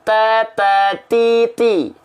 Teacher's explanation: ujung lidah kita nempel ke Pangkal gigi seri atas kita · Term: huruf ta